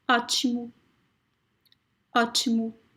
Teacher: So the first one is very open, O. The last one is very, very closed. You can almost not hear it. Okay, it's very, very subtle, and it sounds like U, but it's very weak.